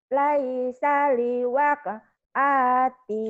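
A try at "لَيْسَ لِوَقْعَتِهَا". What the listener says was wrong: Hanya pendek. Atiha. Pendek. Laisa liwaqa'atiha kadhibah. Laisa liwaqa'atiha kadhibah.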